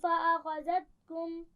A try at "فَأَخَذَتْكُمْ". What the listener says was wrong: ذال میں سیٹی نہیں ہوگی. فَأَخَذَتْكُمْ